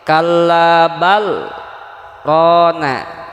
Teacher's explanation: Jadi berhenti saktah tanpa bernapas sekira-kira 2 harokat.